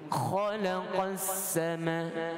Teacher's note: Jadi khalaqas, dia jadi huruf ha pula. Khalaqas, dia ada geseran yang kasar pada kha.